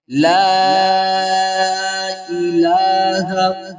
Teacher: کہ اول کلمہ طیب، طیب کے معنی پاک ہیں۔ لا الہ، لام کو آپ نے 3 الف کی مقدار کھینچ کر پڑھنا ہے، اور حمزہ کے نیچے زیر ہے، اس کو نہیں کھینچنا، اور لام کو ہم نے 1 الف کی مقدار اوپر کی جانب کھینچنا ہے۔